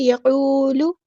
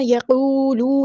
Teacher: لام کی پیش کو ہم نے لمبا نہیں کرنا، یقولو نہیں پڑھنا.